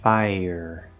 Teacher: you can simply do a small, very small E sound, a Y sound, between the two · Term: small y